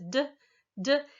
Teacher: this d sound is a voiced alveolar stop it's voiced like the it's alveolar in that you're putting your · Again, you're stopping the air. So you place your tongue against the alveolar ridge and then release a slight rush of air as you move your tongue away to create the d, d sound. · it's alveolar in that you're putting your tongue up against this what's called the alveolar ridge back there behind your teeth